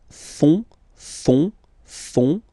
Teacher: you've got this O-N, so basically it's nasal, so it goes in your nose